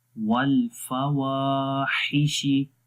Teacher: वाव को लंबा करेंगे, अलिफ मद्दा है